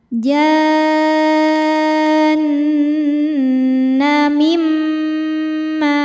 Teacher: Karena nun sukun bertemu huruf mim. Cara bacanya bunyi nun dileburkan ke mim disertai dengungan. Jadi mim tahan mim ma. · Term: idgham bighunah